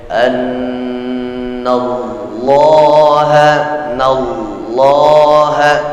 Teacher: Setelah nun masuk lafzul jalalah, jangan berikan kesempatan wawu masuk di antara huruf nun sebelum lafzul jalalah.